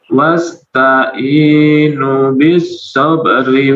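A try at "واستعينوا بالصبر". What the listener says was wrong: hati-hati. Wasta'inu, nunnya 2 harakat. Nunnya 2 harakat.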